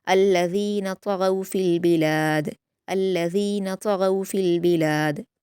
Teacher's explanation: ता और गैन को पुर पढ़ा जाएगा और लास्ट में क़लक़ला करेंगे